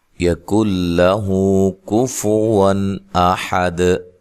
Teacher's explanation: یَکُن لَهُ كُفُوًا أَحَدٌ، یہاں کاف کو باریک پڑھنا ہے، یہاں نون ساکن کا ادغام ہو رہا ہے لیکن بلا غنہ ہے